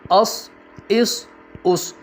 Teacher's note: صاد حرف مستعلیہ میں سے ہے، اس کو بھی ہمیشہ آپ نے پر پڑھنا ہے۔